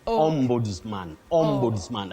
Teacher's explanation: The only thing is that S takes the sound Z.